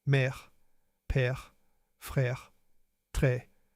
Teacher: The accent grave can appear on e, a, and u. On the letter e, it gives a more open sound. mère père frère très The sound è is more open than é.